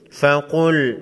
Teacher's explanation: قاف حروف مستعلیہ میں سے ہے، موٹا پڑھیں گے